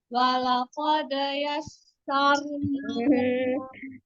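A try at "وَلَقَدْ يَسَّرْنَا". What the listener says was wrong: Jangan dipisah pantulannya. Pantulannya jangan misah. Walaqad. Walaqad. Walaqad.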